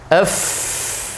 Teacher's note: huruf f, ada aliran nafas, juga ada aliran suara bersamaan